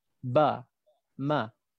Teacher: Ba, ma, dua-dua kat situ. Bertemu dua bibir.